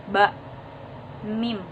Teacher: ketika mengucapkan huruf ba huruf mim maka bibir bawah bersentuhan dengan bibir atas bak mim keduanya bersentuhan huruf dari mim itu bunyi nasal hurufnya · persamaan dari huruf ba dengan mim yaitu sama-sama bunyi bilabial atau syafataniyah gitu.